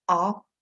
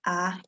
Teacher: the fairly open central unrounded vowel ah it can be produced as the open front unrounded vowel ah